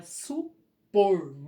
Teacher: supor não é acentuado, mas a última sílaba tônica é o por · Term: oxítona